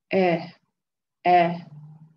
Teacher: The first letter is Hamza al-Qata. So it basically comes from the lowest part of your throat, which is Aqsa al-Halaq. Aqsa al-Halaq is your further part of your throat.